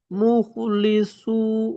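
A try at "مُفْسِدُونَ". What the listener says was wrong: মুফসিদুন, এখানে লাম নেই।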